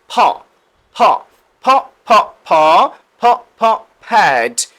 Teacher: দুই ঠোঁট থেকে উচ্চারিত হবে এবং বাতাস বের করে উচ্চারণ করতে হবে।